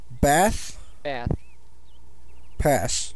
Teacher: i say those all with the same vowel the a is the same throughout